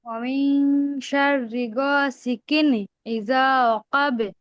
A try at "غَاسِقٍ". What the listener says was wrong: غاسقين হবে না, কফ দুই জের কিন, কফ মোটা হবে।